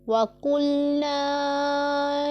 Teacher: قاف ہمارا پر پڑھا جانے والا حرف ہے، حروف مستعلیہ میں سے ہے، اسے پر پڑھیں گے